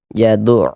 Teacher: Karena cara membaca huruf lamnya dibaca izhar izhar qamari. Jadi huruf lamnya dibaca jelas dia gitu. Jaduul. Nah, terbaca dia dengan jelas.